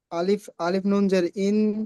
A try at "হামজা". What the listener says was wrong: আলিফ নই, আলিফ হবে না জি।